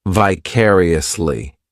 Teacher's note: This adverb has five syllables and the stress is on that second syllable.